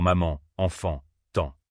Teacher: Ces sons sont très particuliers car l'air ne sort pas seulement par la bouche mais aussi par le nez. C'est pour ça qu'on les appelle nasales. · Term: voyelles nasales